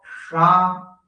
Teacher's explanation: मूर्धा मतलब जीभ पीछे मोड़ कर लेके जाते हैं। अच्छा, जीभ को पीछे मोड़ कर लेके जाओ, कष्ट इतना मोड़ के ले जाओ जिससे लौट आओगे, वही ना रह जाए, तो वहां बोलो शा, तो ये मूर्धनीय सा होता है।